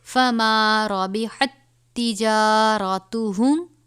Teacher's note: تا کے بعد تا کے اوپر مشدد ہے تو اس کو ہم تھوڑا سا سختی سے پڑھیں گے، اس تا کو اس کے ساتھ ہم ملائیں گے